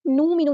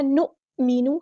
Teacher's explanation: حمزہ ساکن کی آواز میں چھٹکا آتا ہے